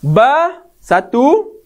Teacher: Di mana huruf ba ni semata-mata keluar pada bibir.